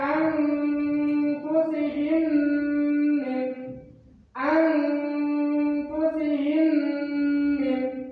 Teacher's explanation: Sebagai contohnya, untuk bacaan idgham mimi atau idgham mutamatsilain, contohnya ada anfusihim min, anfusihim min, anfusihim yaitu huruf dari mim mati itu dileburkan kepada huruf mim selanjutnya